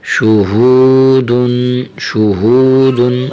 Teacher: ہا کو موٹا کریں اور واو کے ساتھ تھوڑا سا کھینچیں، واو کو دو الف یا تین الف جتنا تھوڑا سا کھینچیں